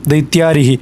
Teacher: दैत्य इसके बाद अ था और पहले अ है, दोनों जुड़ करके आ बना दीर्घ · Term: दीर्घ संधि